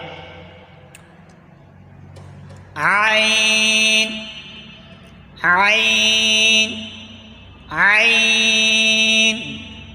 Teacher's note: के दांतों के अंदरूनी किनारे से अदा होता है आईन आईन आईन हलक के दरमियान वाले हिस्से से अदा होता है · حلق کے درمیان والے حصے سے ادا ہوتا ہے۔ عین حلق کے درمیان والے حصے سے ادا ہوتا ہے، جس حصے سے ہا ادا ہوتا ہے اسی جو مخرج ہا کا ہے وہی مخرج عین کا بھی ہے۔